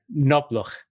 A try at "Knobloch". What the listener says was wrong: Yeah, it's the pronounced K. It makes a difference.